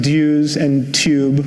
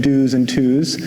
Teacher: pronouncing dues and tube with a y sound instead of saying dos and twos